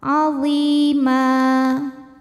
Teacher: cara bacanya dipanjangkan mimnya dua harakat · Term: mad iwad